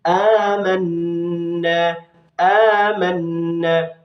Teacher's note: ada nun yang bertasydid lagi, disebut dengan bacaan gunnah, harus didengungkan cara bacanya. Ada fathah diikuti alif, ini mad tabi'i juga.